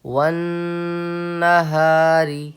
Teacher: نون پہ تشدید ہے تو یہاں پہ آپ کو غنہ کرنا ہے 1 الف کے برابر